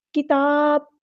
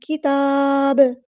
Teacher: با کو ہم ساکن کر دیں گے تو یہاں پر قلقلہ ہوگا